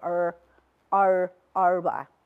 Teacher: Also the R, which is a retroflex. The R in the Arabic, it's normal R, but in the Shahi dialect, you will hear them that they are sort of rolling up their tongue when they pronounce the R.